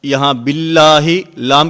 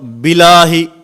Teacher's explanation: یہاں باللہ لام کے اوپر شد ہے، بسا اوقات توجہ نہیں ہوتی تو یہ شد رہ جاتی ہے